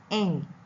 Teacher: Number one, the soft palate is lowered and all the air passes out through the nose. The mouth is blocked by the back of the tongue pressed against the soft palate. This sound is voiced.